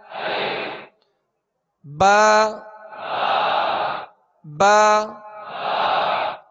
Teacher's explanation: با کا جو مخرج ہے مخارج کی لسٹ میں آپ دیکھیں گے کہ دونوں ہونٹوں کے تر حصے سے با ادا ہوتا ہے. اس کو با یعنی خشک حصے سے ادا نہیں کریں گے بلکہ با نرم جو اس کا وہ تر حصہ ہے دونوں ہونٹوں کا اس سے با ادا ہوتا ہے.